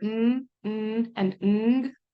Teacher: when we produce them the air is coming out of our nasal cavity instead of out of our mouth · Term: nasal sounds